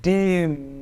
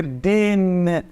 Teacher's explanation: Atenção, no português, o M e o N finais têm o mesmo som, porém no alemão a gente precisa pronunciar de maneira a diferenciar esses dois fonemas. O dem, a gente termina com a boca fechada, olha, dem, tá? E aqui é den, a gente põe a ponta da língua lá em cima no céu da boca, tá? Então precisa fazer essa diferenciação sim no alemão, tá bom?